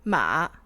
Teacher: the third intonation will be first falling and then going up again so it's a curved dipping line so like a little a little carrot thing upside down character